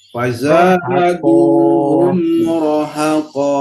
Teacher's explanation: Jangan rohnya jangan panjang